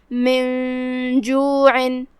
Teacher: من جوع، کلمت جوع کے آخر میں یہاں حرف العین ہے، عین کی ادائیگی حلق کے درمیان والے حصے سے ہے · ہم نون کو بغیر ظاہر کیے ہوئے چھپاتے ہوئے لیکن غنہ کے ساتھ یہ حکم کو ادا کریں گے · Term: اخفاء